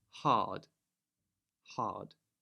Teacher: But in the middle, rather than saying hard, we would say hard, hard. So that A sound is lengthened in replacement of the R sound.